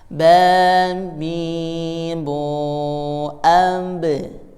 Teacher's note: Jadi suaranya, pantulannya ada di bibir karena ba itu di bibir. Abe, abe, abe.